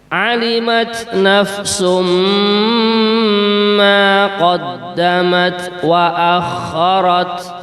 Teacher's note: pada kalimat nafsum wonten tanwin, harokat tanwin domah, setelahnya mim, yaitu mendengung